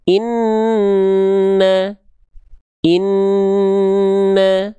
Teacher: ketika masuk n-nya itu ketika dengung tahan dulu dua harakat ya. Inna inna baru masuk ke vokal a dari huruf nunnya. · Dia gunah artinya dengung. Suaranya masuk ke dalam rongga hidung sehingga sengau.